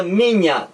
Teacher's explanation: Na palavra minha, também o M é uma consoante bilabial. Você encosta um lábio no outro.